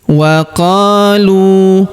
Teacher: Huruf qa kita panjangkan 2 harokat karena alif di depannya.